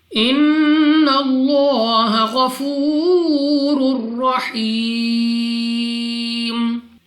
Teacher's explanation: نون مشدد غنہ کر کے پڑھنا ہے، ناک میں سے پڑھنا ہے۔ لام آف اللہ سے پہلے حرف پر زبر تو اس لام آف اللہ کو پر یعنی موٹا پڑھا جائے گا۔